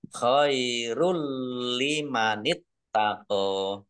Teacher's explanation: Rok dhammah sukun, ini dhammah sukunnya tidak dibaca, langsung masuk ke huruf lam. Khairul limanit taqo, tapi tidak mendengung. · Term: idgham bila gunnah